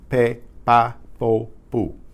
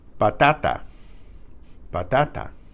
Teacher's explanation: There's no puff of air with the P.